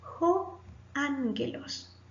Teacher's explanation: cuando hay dos gamma, la primera gamma suena como una N.